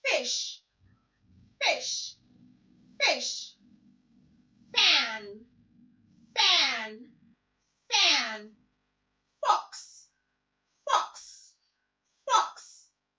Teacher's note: It's a voiceless sound. You don't use your voice when you're articulating the sound. · Letter F sounds You place your top teeth on your lower lip and blow out air quietly because it's a voiceless sound. It's a quiet sound.